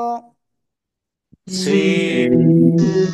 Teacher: এই অক্ষরটা আপনি চার আলিফ টেনে পড়তে হবে, জিহ্বার আগার সামনে নিচে দুই দাঁতের পেট ও আগার সাথে লাগিয়ে।